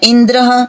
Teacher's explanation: जैसे मान लीजिए हम कहते हैं इंद्र, जो शब्द इंद्र शब्द हम प्रयोग करते हैं, तो यहाँ पे देखिए ई के बाद न, द और र, ये तीनों व्यंजन हैं और तीनों व्यंजनों के बीच में कोई स्वर नहीं है, इसलिए ये तीनों जो हैं ये संयोग संज्ञा होती है।